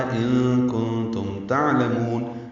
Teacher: نون ساکن کے بعد کاف اور تا آنے کی وجہ سے دونوں جگہ اخفا ہے · عین ساکن پہ اظہار ہے، لام جلدی پڑھیں گے، میم کو لمبا کریں گے